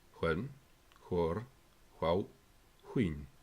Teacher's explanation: it represents the voiceless velar approximant, equivalent to wh in some conservative English dialects.